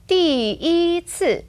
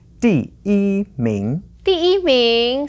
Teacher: So as an ordinal number, here the 一 stays in the first tone.